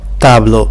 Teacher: sobre a vogal indica exatamente onde está a vogal tônica tablo a vogal tônica está na sílaba ta na vogal a